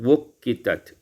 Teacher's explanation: ditukarkan hamzah dengan waw yang berdhammah, baik wasal atau kita memulaikannya dan memulaikannya.